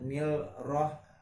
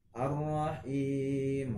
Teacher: Karena di sini ada alif lam gitu bertemu dengan huruf ra. Alif lam bertemu dengan huruf ra. Maka hukumnya adalah idgham syamsiyah